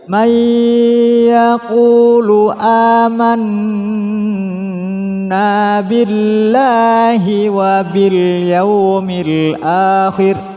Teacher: terdapat nun tasydid, jadi ditahan ketika man, nanya satu alif.